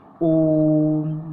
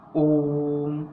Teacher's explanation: ओम का उच्चारण करेंगे तो वो तीन मात्रा का समय हमें लगता है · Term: प्लुत स्वर